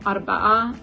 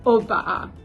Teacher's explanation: one of the shibboleths is whether people pronounce the R sound in the word for four